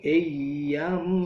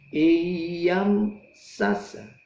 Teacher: Iyam, di situ ada mim mati ketemu sin. Mimnya tidak ditahan, tetapi mim matinya langsung dilepas karena ketemu sin. Bacaannya idhar syafawi.